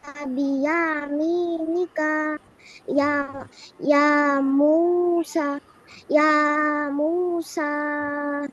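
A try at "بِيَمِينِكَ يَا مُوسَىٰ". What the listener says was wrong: ইয়াটা টান হবে না, হ্যাঁ, ইয়াটা একালিপ টান দিয়ে দিছো।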